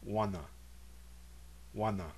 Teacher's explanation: The first syllable contains a nasalized vowel.